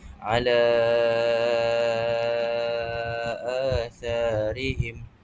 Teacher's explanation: Jadi kita perlu panjangkan dengan kadar 4 atau 5 harakat pada perkataan ala. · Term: mad jaiz mufasil